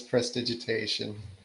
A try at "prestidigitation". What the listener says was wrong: One more syllable in there. Prestidigitation. Prestidigitation.